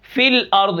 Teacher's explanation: فی الارض، یہاں پر یا حذف ہو گئی